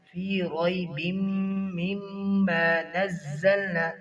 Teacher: زا کو سختی کے ساتھ پڑھیں گے،